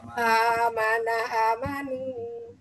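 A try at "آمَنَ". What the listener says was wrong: Bu, A-nya dibaca panjang, Ibu. Amanah, amanu.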